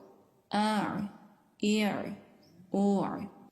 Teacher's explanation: عین کو ادا کرتے وقت حلق کے درمیانی حصے سے آواز آ رہی ہے، حلق کا درمیان جو ہڈی والا حصہ ہے۔